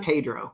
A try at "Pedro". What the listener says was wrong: It's Pedro. Pedro. You have to roll the R's, number one, which I can't do all the time.